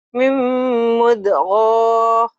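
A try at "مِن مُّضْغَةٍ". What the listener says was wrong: Pendek atuh, kadang manjangin. Mim mudghah.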